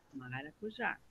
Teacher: Mas a sílaba tônica dela é a última.